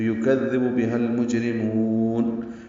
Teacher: جیم ساکن پہ قلقلہ ہے · لام ساکن پہ اظہار قمری ہے میم کی وجہ سے، میم حروف قمری میں سے ہے.